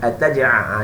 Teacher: ain mesti pekat di khalqum, pekat berpikat tertikat seperti air teh, air teh tarik.